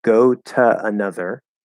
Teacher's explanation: you can just not connect them and just let the vowels flow into each other